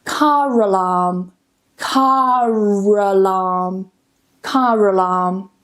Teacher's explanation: in rapid speech, this would come together and we would use the linking R